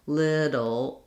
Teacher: We have the initial L and this syllabic L.